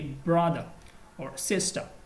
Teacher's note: in a British accent that's totally different okay we drop the r sound sometime